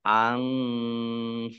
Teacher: Qaf sukun, bacaan qalqalah. Memantul, ditampakkan pantulannya.